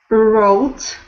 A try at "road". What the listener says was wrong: So when you said it before, there was a little bit of a roll on the R, like wrote almost. Not that bad, but that was the sound I was hearing. That's a good one that you can practice, making that R sound all the time.